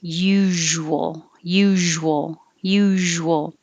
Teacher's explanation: i'm kind of letting the sh blend into the w